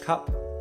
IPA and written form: kʌp (cup)